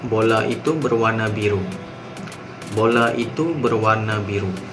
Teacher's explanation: Ayat ni dia tak ada tinggi, dia tak ada rendah, dia mendatar je. Orang putih cakap flat. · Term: intonasi mendatar